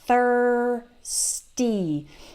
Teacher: do that th with your tongue between your teeth thirsty okay so thir it's just like in the word third